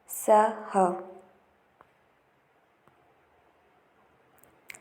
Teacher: स, ह ऊष्मीय वर्ण है। जिन व्यंजनों का उच्चारण में घर्षण महसूस होता है और वायु मार्ग संकीर्ण होता है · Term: संघर्षी व्यंजन